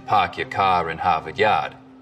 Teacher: The stereotypical Boston accents, of course, are non-rhotic, meaning no R sounds in park your car in Harvard Yard.